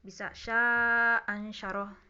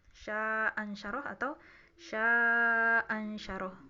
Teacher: Sya-nya bisa dibaca 2 atau 4 harokat